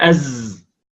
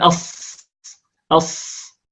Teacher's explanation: عندما ننطق الصاد نقول أص أص، والزاي نقول أز. فالزاي مرققة ليست مفخمة، والصاد مفخمة مطبقة. فالصاد التي كالزاي عبارة عن أننا ننطق الصاد ونشربها صوت الجهر الذي في الزاي، لأن الصاد مهموسة.